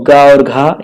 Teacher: गा और घा ये आपका गा, घा कंठ होता है।